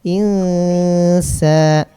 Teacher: ketika udah membaca disamarkan maka langsung ke makhraj sin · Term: ikhfa